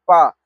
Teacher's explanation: जिस वर्ण का उच्चारण ओष्ठ के स्पर्श से होता है। उसे हम पोस्ट वर्ण कहते हैं। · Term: ओष्ठ वर्ण